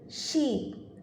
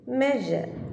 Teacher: ഈ ഒരു ഡയഗ്രത്തിൽ നോക്കിയാൽ പാലറ്റോ അൽവിയോളാർ സൗണ്ടിൻ്റെ പ്രൊഡക്ഷൻ്റെ സമയത്ത് ടിപ്പ് അല്ലെങ്കിൽ ബ്ലേഡ് ആ ഒരു പാർട്ട് ടീത്ത് റിഡ്ജിലേക്ക് മൂവ് ചെയ്യുന്നതും, അതേപോലെ ഫ്രണ്ട് ഓഫ് ദി ടങ് ആ ഒരു പാർട്ട് ഹാർഡ് പാലറ്റിലേക്ക് മൂവ് ചെയ്യുന്നതും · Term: പാലറ്റോ അൽവിയോളാർ സൗണ്ട്സ്